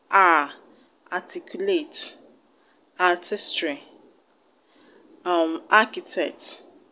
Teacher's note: They are pronounced as a single sound. The R's are not being pronounced. So that's why they are pronounced as long A.